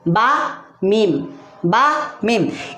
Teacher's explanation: बा और मीम दोनों होंठ मिलकर अदा होते हैं